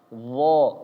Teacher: D enggak ada aliran nafasnya. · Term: huruf jahr